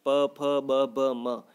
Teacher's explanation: प फ ब ब म ये पांचों ही वर्ण कहाँ से उच्चारित होते हैं दोस्तों? होठों से होते हैं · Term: ओष्ठ्य ध्वनियाँ